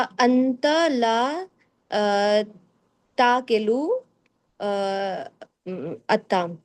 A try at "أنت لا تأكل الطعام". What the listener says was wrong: कुलू, किलू नहीं कुलू, बाकी ठीक है बिल्कुल।